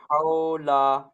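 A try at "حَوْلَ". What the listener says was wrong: হাও বলে টান হয়ে যাচ্ছে হাওলা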